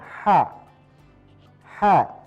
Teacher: Ha-nya kosong berada di tenggorokan.